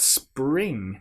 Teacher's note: Now, here we've got S, P, R. We've got three consonant sounds all together to make spring and then at the end, ing that nasal sound again.